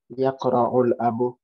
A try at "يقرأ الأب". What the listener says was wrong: You better not read the last vowel, okay? So read it again.